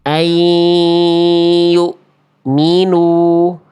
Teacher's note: Tapi seharusnya bunyi an-nya udah nggak ada karena udah masukin ke huruf ya-nya.